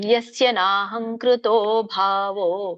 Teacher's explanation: ಭಾವೋ 2 ಗಳಿಗೆ ಮಾತ್ರ ಹೇಳಿದೆ. ಭಾವೋ 4 ಗಳಿಗೆ 3 ಗಳಿಗೆ ಎಳೆಯಂಗಿಲ್ಲ. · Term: ದೀರ್ಘ